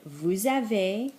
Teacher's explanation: don't pronounce that Z on the end